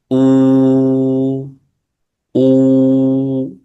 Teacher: مخرج الواو غير المادية من الشفتين حال انضمامهما مع انفراجهما. أو هذه الواو غير المادية.